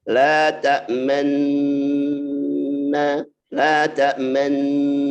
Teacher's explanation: Nah, itu ternyata asalnya kan la ta'manuna ya. Maka nunnya dijadikan satu, nunnya digabungkan, didengungkan. Ketika dengung dia harus monyong ya. La ta'man isyarat dhamma. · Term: ismam